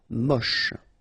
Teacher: Don't insist on the final E, then you get the last sound is sh.